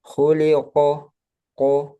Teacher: nggak ada hamasnya, nggak ada udara.